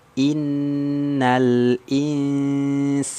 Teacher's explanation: Nun musyadadah itu berarti gunah ya gunahnya kuat di sini karena Nun musyadadah Nun tasdid